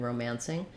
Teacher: There's an old movie called Romancing the Stone, and the stress is on mance there in romancing.